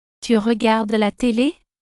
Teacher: This is an informal way to ask a question by raising the pitch at the end of the sentence. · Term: rising pitch